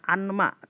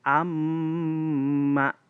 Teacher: Maka dibacanya berdengung. Contoh, misalkan nun mati bertemu dengan mim, maka dibaca bukan anma, tapi amma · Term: idgham